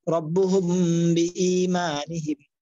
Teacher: মিম সাকিনের পরে বা আসছে এজন্য এগুলা গুণা করছি, এই যে মিম সাকিনের পরে বা আসছে এই জন্য এগুলো গুণা করছি।